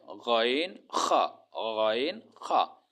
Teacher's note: হলকের শেষ ভাগ হইতে, মানে গলার শেষ হইতে 2টি হরফ উচ্চারিত হয়,